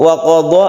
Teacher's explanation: Wa qadha adalah mad tabi'i atau mad asli. Kita membacanya satu alif dan jangan terlalu panjang.